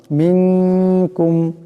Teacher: এখানে মিন নুন সাকিনের পরে কাফ আসছে কাফ ইকফার হরফ এখানে ইকফার এক পরিমাণ গুন্না হবে